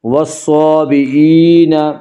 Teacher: یا مدہ کو 1 الف کے برابر کھینچ کر پڑھیں گے · والصابئین، الف مدہ، الف ہمیشہ مدہ ہوتا ہے، الف سے پہلے ہمیشہ زبر ہوتا ہے، الف مدہ کو 1 الف کے برابر کھینچ کر پڑھیں گے